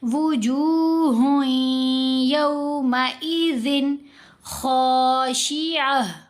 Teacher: इदगाम करते हुए वो नून की आवाज़ या के अंदर ही मर्ज हो जाएगी, यूँ समझें खामोश हो जाएगी। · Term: غنہ